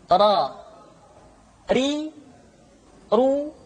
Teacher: huruf ro diucapkan dengan menyentuhkan punggung lidah dengan langit-langit